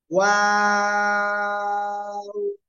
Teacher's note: দুই ঠোঁট প্রথমে গোল, মাঝখানের দিকে আবার এদিকে প্রসারিত হবে আওয়াজে, তারপর আবার শেষে গোল হবে